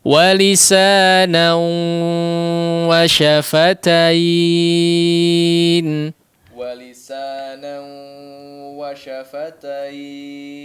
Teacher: Lagi-lagi bertemu dengan idgham bi ghunnah ya, yang dimasukkan kepada huruf waw ya, nun sukun atau tanwin yang masuk kepada huruf waw disertai ghunnah ya